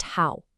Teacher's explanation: It has this falling then rising quality. Think of your voice dipping down and then scooping right back up. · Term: third tone